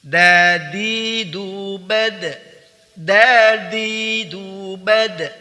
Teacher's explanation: Perhatikan, huruf dal, huruf da ada 6 sifat hurufnya, yaitu al-jahr, nafas tertahan, asyiddah, bunyi tertahan, tidak dialirkan. Perhatikan di sini tidak dialirkan.